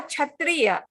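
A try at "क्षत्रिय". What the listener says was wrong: Sha, Didi. Not cha. There's no cha sound there. It's sha. Ka and sha. Kshatriya.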